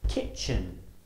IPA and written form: ˈkɪtʆən (kitchen)